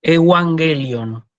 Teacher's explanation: si yo tengo doble gama, como en este caso, tengo que pronunciar primero N y después G, ¿sí? Como G de gato, la G suave.